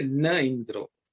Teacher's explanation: So the swasti na indro it says, but that visargaha is dropped because of sandhi. When a vowel follows naha, e follows naha, the visarga is dropped.